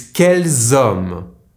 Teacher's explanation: Here I am pronouncing the ending S only because hommes starts with a silent H so I am making the liaison.